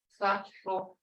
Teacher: It sounds a little like three in the English, filthy, except that the air passes over the side of the tongue rather than the tongue tip. · It's a lateral fricative.